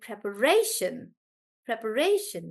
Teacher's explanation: the stress is actually on Ray because it's right before Shan